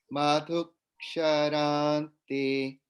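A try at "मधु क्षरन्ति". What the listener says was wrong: Only thing is ksharanti, a little bit more holding on the n, so that it's not anti, it's anti, because the is hrasva. Then there's holding on the n, which kind of gets doubled.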